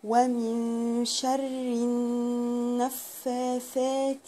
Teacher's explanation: اللام هنا بقى مش هنطقها، دي لام شمسية